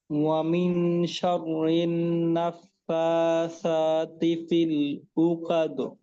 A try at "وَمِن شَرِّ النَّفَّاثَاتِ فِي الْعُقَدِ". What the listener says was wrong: আচ্ছা, আইন আর একটু চাপ দিতে হবে, আর কফকে আর একটু মাখরাজে রাখ। উ কদ, কা ধরে নিন না, উ কদ, উ ক, হ্যাঁ, কাদ এমনটা শোনা যাচ্ছে।